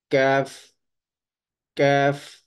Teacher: قاف کے بعد جو منہ کی طرف تھوڑا ہٹ کر جو ہے وہاں سے ہم کاف کی آواز نکالیں گے